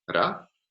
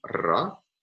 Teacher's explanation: most varieties of Spanish distinguish between a tap, ra, and a trill, a rhotic trill, ra.